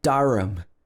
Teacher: If this word was stressed, we would say ham, but because it's unstressed, it becomes The A turns into the schwa sound